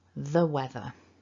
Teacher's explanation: because the word weather begins with a consonant sound we can use the weak form of the word the